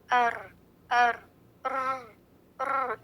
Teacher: The light trilling of the tongue when pronouncing the raw due to its tight articulation point is तकरार · जैसे scooter या bike शुरू करते वक्त अर की आवाज आती है, ये तकरार रॉ की सिफत में है। रॉ अदा करते ही खुद ब खुद ये ट्रिलिंग की आवाज आ जाती है। · रॉ की सिफत में तकरार है। तकरार यानी रेपिटेशन, अर अर ये जो आवाज है ये है तकरार।